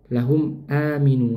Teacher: Nah, di sini ada mim sukun. Mim sukun bertemu dengan hamzah, dibaca jelas.